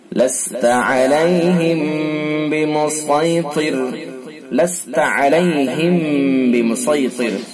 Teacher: और वफ की सूरत में ये रा भी बारिक होगी, रा बारिक होगी वफ की सूरत में, बल्कि वस्ल करेंगे तब भी रा बारिक होगी। चूंकि वस्ल अगर पढ़ेंगे तो जेर होगा रा के नीचे, तो जेर की वजह से बारिक होगी। और वफ कर लेंगे तो रा साकिन हो जाएगी, और रा साकिन से पहले तो के नीचे जेर, तब भी बारिक होगी।